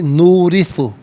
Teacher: را کے نیچے زیر ہے، را کو باریک کر کے پڑھا جائے گا، زبر یا پیش ہو تو پر پڑھتے ہیں، زیر ہو تو باریک پڑھتے ہیں، یہاں باریک پڑھیں گے۔